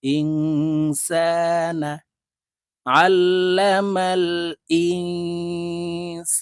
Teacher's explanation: নুন সাকিনের পরে ইকফারা হরফ সিন আসছে তাই এই নুনকে নাকের ভিতরে লুকাইয়া গুন্নার সহিত পড়বো